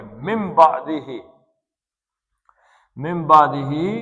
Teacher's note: اب یہ نون کے بعد با آ گیا، تو اس نون کو نون نہیں پڑھیں گے بلکہ میم پڑھیں گے